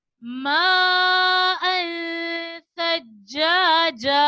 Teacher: سا کو نرمی کے ساتھ پڑھیں گے کیونکہ سا نرمی والے حروف میں سے ہے